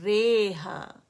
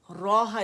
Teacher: امالہ میجر بنایا ہے، یعنی بڑی یا کی طرف ریہا، روحا نہیں پڑھا اسے، ٹھیک ہے.